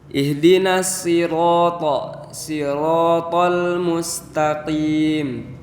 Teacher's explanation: kalau di sirot sirot itu karena pakai huruf shod maka ditebalkan